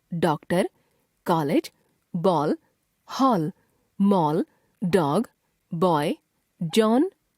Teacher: इसका उच्चारण आ तथा औ के बीच का होता है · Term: आगत स्वर